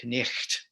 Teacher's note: So you would have had a K sound at the front. That GH in the middle is a kind of that guttural sound that English has lost over time.